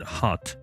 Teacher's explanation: The first allophone is a voiceless glottal fricative.